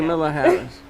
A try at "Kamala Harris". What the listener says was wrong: Camilla would be ILL, but it's Kamala. It's Kamala. Kamala Harris.